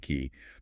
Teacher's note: When you make an E sound, yes, the front of your tongue goes high, but the middle and back of the tongue should still retain that lower settled position dictated by the schwa anchor.